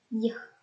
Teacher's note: The body of the tongue approaches or touches the hard palate. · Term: palatal approximant